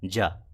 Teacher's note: जब ज बोलते हैं तो हमारी जो जिह्वा है वो तालू से लड़ती है